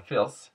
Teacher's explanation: at the ends of words, the voice TH becomes an S or Z